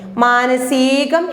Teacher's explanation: സ ദീർഘിപ്പിക്കേണ്ട, ഹ്രസ്വമായിട്ട് പറഞ്ഞാൽ മതി. മാനസികം എന്ന് തെറ്റാണ്.